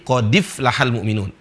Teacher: Jadi Hamzah itu melebur dan mengikuti huruf sebelumnya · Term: an-naql